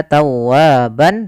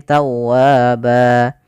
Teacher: ketika di akhir bacaan kita namakan dengan mad iwad, yaitu berubah menjadi panjang ba kalau kita waqaf. Bukan lagi kita baca tawaban tapi tawaba.